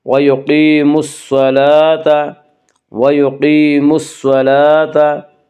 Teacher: صاد کو پر پڑھیں گے، صاد حروف مستعلیہ میں سے ہے